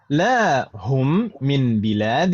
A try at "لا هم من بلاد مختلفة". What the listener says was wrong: مختلفة. مرة أخرى بلاد itu panjang ya.